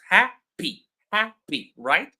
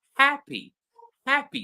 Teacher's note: when we pronounce them, you will notice that ha is louder, it's longer, and also it has more energy than P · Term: stressed syllable